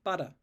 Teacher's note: because it's between two vowels I can't be bothered turning my vocal cords off to make the valve and so I'm replacing it with basically